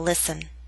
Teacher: listen is one of those words in which we always omit the T sound